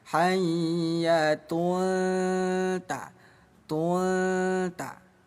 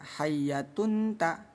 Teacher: Akhfa itu artinya samar. Jadi cara bacanya bunyi domatain kita samarkan selama dua ketukan ya. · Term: ikhfa hakiki